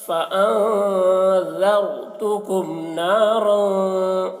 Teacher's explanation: نون میں اخفا کریں گے، اس طرح ذرتکم، ذال کو باریک اور را کو موٹا کر کے